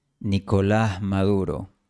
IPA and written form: ni.ko'lah ma'ðu.ɾo (Nicolás Maduro)